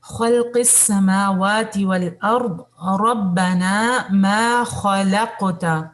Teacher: قاف پہ آپ کا کلکلا ہے, اور کلکلا اس انداز سے نہیں کرنا کہ فتحہ لگ جائے اس پہ نا